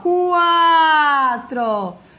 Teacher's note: depois diminui e o ditongo crescente é semivogal e vogal quatro começa mais fechado depois depois abre